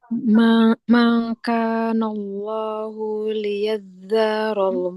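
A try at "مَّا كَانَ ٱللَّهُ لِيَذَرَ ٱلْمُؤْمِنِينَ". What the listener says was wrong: liyazzar. Zalnya nggak bertasydid Ibu ya, nggak boleh ditekan. Maka Allahu liyadzarul mu'minin.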